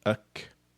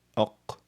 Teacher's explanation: Kaf is slightly ahead of qaf, ak, and qaf is slightly behind kaf, aq